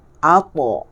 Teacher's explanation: Isti'la iaitu pangkal lidah tebal. Alta dia jadi pangkal lidah tebal.